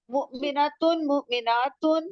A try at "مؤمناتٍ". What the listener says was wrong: Very good.